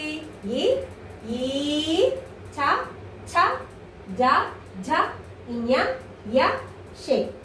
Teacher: ఇవి దౌడ భాగం నుంచి పుట్టుకొచ్చాయి కాబట్టి వీటిని తాలవ్యాలు అని చెప్పేసి అంటారు